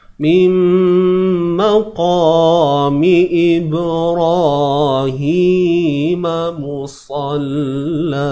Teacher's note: kita ubah dia tebal tapi jangan muncung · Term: huruf q